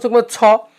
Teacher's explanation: ছ উচ্চারণ করার সময় আপনার হাতে এসে বাতাস লাগবে, তার মানে ছ হচ্ছে মহাপ্রাণ